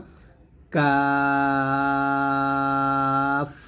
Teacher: কাফটা আমরা হালকা করে উচ্চারণ করব জিহ্বার গোড়া হাতে একটু আগে বাড়াইয়া তার বরাবর উপরের তালের সঙ্গে লাগিয়ে কাফটা পাতলা করে উচ্চারণ করব